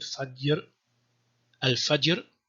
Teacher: there's like a short, purely phonetical, non-phonological schwa inserted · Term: qalqala